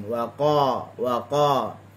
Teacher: tekan di huruf qaf, tak ada angin